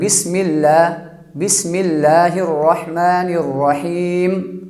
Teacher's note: لفظ اللہ کے لام کو باریک پڑھیں گے